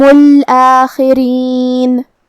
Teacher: خا کو ہم حلق کے اوپر والے حصے سے ادا کریں گے، جو کہ را کے نیچے زیر ہے، تو یہاں را کا حکم ہے ترقیق. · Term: حرف الخا